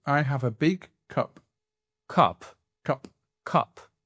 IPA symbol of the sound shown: ɒ